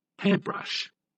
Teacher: compound nouns fairly equally balanced but with stronger stress on the first part